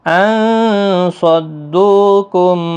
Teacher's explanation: نون ساکن کے بعد صاد آئے تو اخفاء حقیقی ہوگا